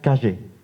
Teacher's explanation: Entonces, según el registro, yo a lo mejor no pronuncio eso que se llama yeísmo reilado, que sería una variante del yeísmo donde es un sonido palatal, es decir, que la lengua se acerca al paladar. Pero aquí se acerca o se esfuerza más, ¿no?